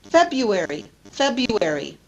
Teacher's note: the r is not pronounced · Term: Disappearing R